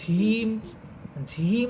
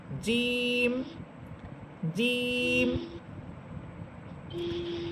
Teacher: অনেকেই জিম হরফটাকে বাতাস ছেড়ে দিয়ে ঝিম ঝিম বলেন, অর্থাৎ বর্গীয় জয়ের সাথে হয়ের উচ্চারণ হবে না। বর্গীয় জয়ের সাথে বাংলায় হয়ের উচ্চারণটা হবে না, বরং হ ছাড়া আপনাকে বলতে হবে। জিম একটু মজবুতভাবে শক্ত করে বলবেন।